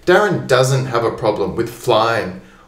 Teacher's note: doesn't in this case is quite strong. Often it's not. But here I want to emphasize that he doesn't. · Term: strong word